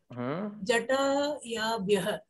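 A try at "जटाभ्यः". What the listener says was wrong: Why Jataya? Jatabhyah. Jata is the word. Jata.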